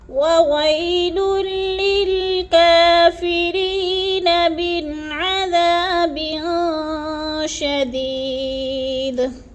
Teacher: اب یہاں پر ہم اس نون کو چھوڑ سکتے ہیں وقف کی صورت میں کیونکہ آگے گول دائرہ آگے ہے وقف آگے ہے. وقف کی صورت میں ہم نون کو چھوڑ دیں گے.